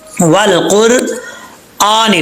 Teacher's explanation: حمزہ کے اوپر کھڑا زبر ہے، سٹینڈ زبر، اس کو 1 الف کی مقدار لمبا کریں گے